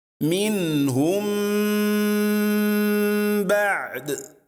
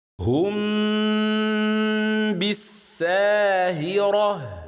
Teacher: we read the first Meem with ghunnah and we also read ba after it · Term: ikhfa